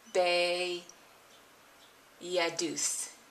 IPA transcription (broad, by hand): bejɛduθ